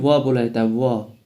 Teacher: और सातवां है दंतोष्ठ। दांत और ओष्ठ से सम्मिलित रूप से व बोला जाता है